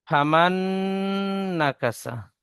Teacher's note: সার উপরে জাবার এসেছে, জাবারটি হারাকাত, হারাকাত তাড়াতাড়ি পড়তে হয়, টান দেওয়া নিষেধ।